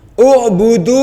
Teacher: Ubudu u pakai ain ya di kerongkongan ya. Udu ada domma ketemu wau.